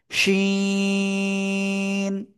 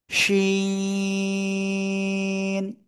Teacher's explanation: ওই একই জায়গা থেকে, জিহ্বার মাঝখান তার বরাবর উপরে তালুর সাথে লাগিয়ে সা সা শব্দ করে উচ্চারণ করতে হবে এবং তিন আলিফ টেনে পড়তে হবে।